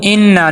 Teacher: ان نون مشدد ہے، غنہ کریں گے